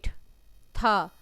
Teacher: अघोष भी है, महाप्राण भी है, दंत से बोला जाता है और व्यंजन भी है।